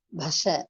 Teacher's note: Ba is Mahaprana. Sha is also Mahaprana. Bha is labial. Sha is palatal.